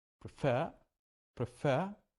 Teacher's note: because it is two syllable verb but the stress is in the second syllable